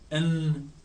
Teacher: एन के अंदर टंग के जरिए, टंग को ऊपर पैलेट से लगा के हवा को रोक रहे हैं और नाक से निकाल रहे हैं